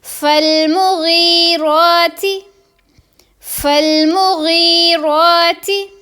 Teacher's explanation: غین کے نیچے زیر ہے اور آگے یا ساکن ہے، اس کو لمبا کریں گے